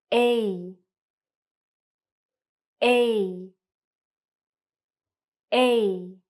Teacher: For the sound A, it's a little bit trickier. It's what we call a diphthong. So it's actually two vowel sounds combined. A. So as you can see, your mouth moves and your tongue goes up a little as you produce the sound. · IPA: /eɪ/